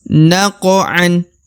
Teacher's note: Huruf qaf qalqalah atau pantul karena dia qaf sukun ya, maka dibaca naqo, harus memantul ya.